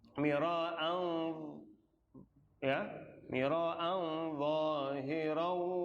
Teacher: Tanwin ketemu dha. Mira'an udah ikhfanya membentuk huruf dha.